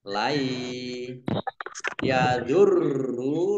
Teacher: Layadurrukum nun sukun bertemu dengan rupiah. Bacaan idgham bi gunnah masuk dengan mendengung, yaitu mendengung ya, ditandai ya-nya ada tasdidnya. Lai yadurru, roknya dibaca dobel ada tasdidnya.